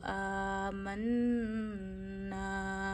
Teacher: نون پہ جب شد آتی ہے، یہ ڈبلیوں کا سائن شد کہلاتا ہے، تو نون میں غنہ ہوتا ہے. یعنی نون کی آواز بھی آپ کو ناک میں لے جانی ہے، 1 انگلی جتنی ٹھہرانی ہے. من الف سے پیچھے زبر ہے، پھر سے الف مدہ کریے، 1 انگلی جتنا کھینچیے.